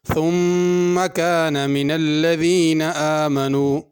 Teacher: ثم پہ غنہ ہوگا اور ثا پڑھنی ہے، ثم سین نہیں پڑھنی۔